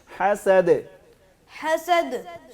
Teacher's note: آخر میں دال ساکن ہے نا، اس کو ہلائیں گے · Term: کلکلا